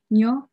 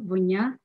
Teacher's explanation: We also have the palatal ne, which occurs in initial and middle position, in initial position, nyo, sulan, then in middle, vonya, ash.